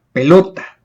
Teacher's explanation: Pelota es una palabra grave. Lleva la mayor fuerza de voz en la penúltima sílaba, es decir, lo.